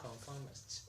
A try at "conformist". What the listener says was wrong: So you need to practice this. You're saying mysticist. You can just say conformist. Okay, so you just need to practice your pronunciation of this word.